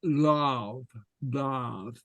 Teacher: the Gallic L is lav, lav. You see, so the tongue goes against the bottom teeth. So you can see my lav.